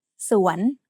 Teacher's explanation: has a rising tone because it has a high class initial consonant combined with a live syllable ending